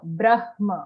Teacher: The ma doesn't come first. The ha comes first, half ha, then full ma.